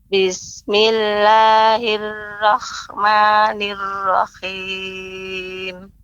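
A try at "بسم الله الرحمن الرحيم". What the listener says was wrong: Ya, pengucapan ra Ibu jangan sampai menjadi kha. Nirrahim, jadi tetap diperhatikan ra-nya Bismillahirrahmanirrahim. Ya, ha tetap diperhatikan, tetap jadi ha kecil ya. Maksud saya adalah huruf ha. Nah, nirrahim jangan sampai jadi kha. Nirrahim.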